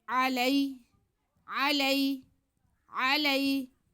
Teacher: بیما انزل، بیما انزل علینا، ان پہ زبر، لام پہ زبر اور یا ساکن. تو لام زبر کے بعد یا ساکن ہو تو یہ یا لین ہوتی ہے، مدہ نہیں ہوتی، لین ہوتی ہے، اس کو بالکل بھی نہیں کھینچتے